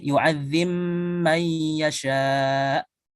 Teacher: qaulun beda dengan Hafs. Maka qaulun di sini apa dengan mengidghamkan ba ke mim